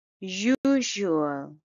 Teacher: it's a three syllable word and the stress is on the first syllable